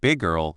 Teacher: the speaker might not fully say the G at the end of big or it might become a softer sound that joins with the G of girl. · the two G sounds feel like one smooth sound